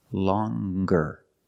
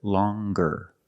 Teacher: With a nasal sound, plus the hard g, longer.